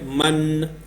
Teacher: آپ کی زبان ہے وہ سامنے اوپر ٹچ ہو رہی ہے مسوڑوں کے ساتھ، تو وہاں پہ آپ نے یہ ٹچ نہیں کرنی ہے، اس کے قریب لے کے جانی ہے، ٹھیک ہے۔ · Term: نون